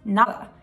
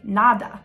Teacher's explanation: when you say the letter D in the middle of two vowels, like in a word, you don't actually say the letter D